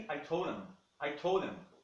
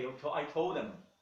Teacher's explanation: Quase que um R, é um DR.